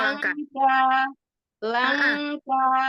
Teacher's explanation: huruf lam ya ujung lidahnya enggak keluar dari Gigi